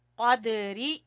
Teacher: قاف دال کے اوپر ہلکا قلقلہ کریں گے اور قاف کو زبان کی جڑ سے ادا کریں گے، قدری۔